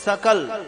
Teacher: सकल दंती सकार, दांत से उच्चारण करने वाला स